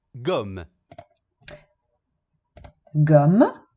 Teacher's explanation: Gomme, évidemment, c'est un E muet. Perché l'ultimo suono che sentiamo è M, e quindi poi c'è la E che è muta.